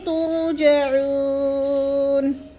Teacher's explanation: جعو کو لمبا کرنا ہے